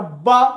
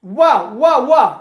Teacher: ब में दांत से स्पर्श नहीं होती जिह्वा, केवल ओठ आपस में मिलते हैं।